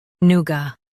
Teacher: noo ga noo-ga noo ga noo-ga In US, stress new. In UK, stress noo and soften ga.